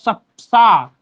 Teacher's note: सपेरा वाला जो सा है उसका उच्चारण स्थान दंत है